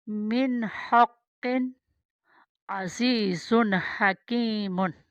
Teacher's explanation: نون ساکن کے بعد ہا آیا ہے اور نون تنوین کے بعد ہا آیا ہے، جو گلے کے درمیان سے ہے، یہ دونوں گلے کے درمیان والے ہیں۔ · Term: اظہار